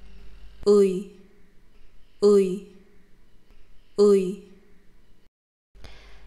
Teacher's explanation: As you can see, to move from to e, my tongue moves a bit forward to the front.